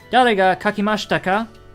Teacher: instead of saying question mark like we have in english we just say ka at the end with the rising intonation